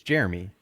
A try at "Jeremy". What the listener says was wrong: You use two syllables for Jeremy. no Jeremy.